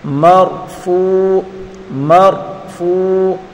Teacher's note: فا واو پیش فو وا مدہ، اس کو ایک الف کی مقدار کھینچ کر پڑھیں گے